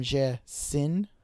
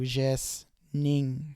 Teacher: And then our ing suffix is our B form. But we get rid of that I sound in between the S and the N there. So that's how we go from jesin to jesning. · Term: drop the I sound